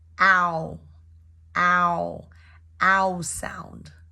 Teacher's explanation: It's a diphthong word, so we want to make sure that we create the ow, combination of the ah and the oo.